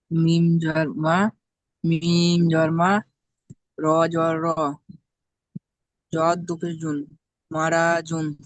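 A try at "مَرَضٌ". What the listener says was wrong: মার, র টান হবে না, মার দুন। মা-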